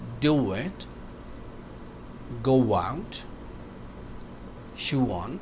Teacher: او کی وجہ سے اور وال آئے گا تو بیچ میں انٹروژن ڈبلیو آئے گا